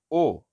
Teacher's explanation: लेकिन आए जैसे आए बोलते हैं तो थोड़ा सा मुंह ज्यादा खुल गया, ए आए। फिर जब बोलेंगे ओ अर्ध समृत में, ओ हाफ क्लोज मुंह है